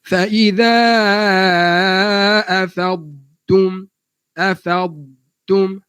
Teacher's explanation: Habiskan dha secara rakhawahnya daripada makhrajnya, baru pindah kepada huruf ta.